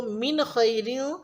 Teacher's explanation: यहाँ पे नून पे जज़म है, लेकिन आगे ख्वा यानी हरूफ़ हल्की आ रहा है, तो यहाँ पे हम नून पे इख्फा नहीं करेंगे